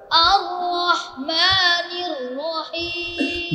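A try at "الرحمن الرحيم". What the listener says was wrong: নির, দেখছা মুখে চলে আসছে পড়া। ওর জন্য দোয়া করো, আল্লাহ যেন ওর নাক থেকে পড়াটা ছুটিয়ে মুখে নিয়ে আসে।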